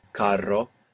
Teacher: So we have two R's in carro. That's why we have this rolling R.